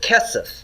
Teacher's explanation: notice it's got first syllable stress